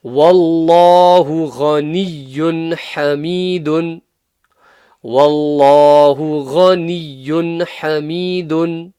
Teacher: Here we have an example of Allah's name being full mouth because it has a fathah before it.